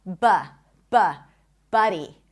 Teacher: This is a cup sound. A cup sound. Also known as the stressed schwa.